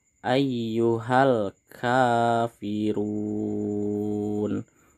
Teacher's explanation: pada kata run ini di sini kita harus membacanya panjang 6 harokat, bisa juga 4 dan juga bisa 2 harokat. Dan mat ini disebut dengan mat arid lis sukun.